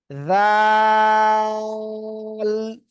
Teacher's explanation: আপনি আপনার জিহ্বাটা সামনের উপরে 2 দাঁতের আগায় লাগান, লাগান লাগান, লাগিয়ে নরম সুরে আওয়াজ করে পড়তে হবে। আর 3 আলিফ টান হবে, যাল।